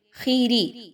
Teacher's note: خا کو موٹا پڑھیں گے، لیکن خا کی ساتھ زیر ہے تو خے کی آواز نہیں آنی چاہیے، بلکہ آخیری، را زیر ری، را کو باریک رکھیں گے، را کے نیچے زیر ہے۔